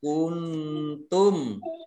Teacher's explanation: Kuntum ini nun sukun bertemu dengan ta bacaan ikhfa ya dibaca samar-samar.